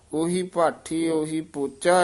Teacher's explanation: ਪਹਿਲੇ ਜਿਹੜੇ ਉਹੀ ਪਦ ਹਨ ਇਹ ਦਰਮਿਆਨੇ ਬੋਲਣ ਹਨ ਨਾ ਹੋੜਾ ਨਾ ਔਂਕੜ ਵਿਚਾਲੜਾ ਜਾ ਮੇਲ ਬੋਲਣਾ